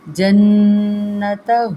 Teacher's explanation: نون مشدد پہ پہلے غنہ کیجیے گا۔ جنتہ، ہا کو بھاری پڑھیں گے۔